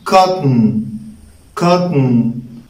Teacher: There is no sound between the t sound and the n sound.